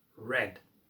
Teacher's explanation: the rounding or curling of the R in American English